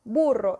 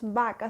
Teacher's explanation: la B con la que escribimos burro y la B con la que escribimos vaca se pronuncia exactamente igual, el fonema no cambia